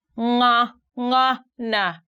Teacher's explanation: you stick your tongue at the back upper part of your mouth and then the voice comes through your nose